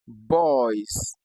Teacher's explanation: in the word boys, the S at the end gives us a Z sound